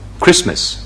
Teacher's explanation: 中間嗰個T咧冇咗嘅，咁咪省略咗佢咯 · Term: 略咗音